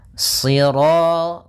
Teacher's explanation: Sirata, si, sambil pangkal lidah kita karena shad itu pangkal lidah kita terangkat dan melekat karena dia huruf idbaq. Sira, kemudian ra-nya ra tafkhim.